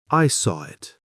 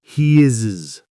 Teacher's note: These sounds W, Y, and R sneak in and smooth the connection. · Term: intrusion